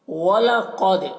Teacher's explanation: क़ाफ को पूर्व पढ़ना है, क़ाफ हुरूफ़ मुस्तालिया में से है। दाल में कलकला करेंगे क्योंकि दाल हुरूफ़ कलकला में से।